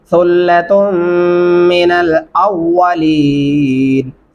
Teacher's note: سا کو نرمی سے ادا کرنا ہے، تا اور میم پہ آپ نے غنہ کرنا ہے۔